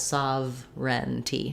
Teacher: no sound between the v and the r sound